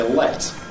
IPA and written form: ɫet (let)